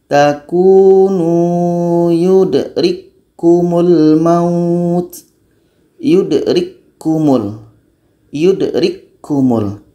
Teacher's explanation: Bunyi ka mati yang berangin tidak terdengar lagi karena sudah masuk kepada ka yang kedua. · Kalau kita baca yudrikkumul, maka belum terjadi idgham kamil karena sifatnya masih terbaca, masih terdengar ka beranginnya. Jadi cara baca yang betul adalah ka yang pertama masuk kepada ka yang kedua.